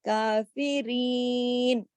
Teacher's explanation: یا سے پہلے زیر ہوگی تو یہ یا مدہ ہوگی، کھینچنے کے لیے ہوگی، اور اس کی آواز ایسی ہوگی کافرین.